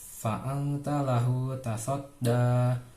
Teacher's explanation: Fa'angta itu dibaca samar-samar karena huruf nun sukun bertemu dengan huruf ta. Hukum tajwidnya ikhfa.